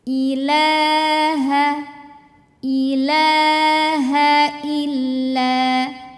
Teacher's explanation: haknya hak gede dari tenggorokan bawah, jadi bawaannya lebih berat.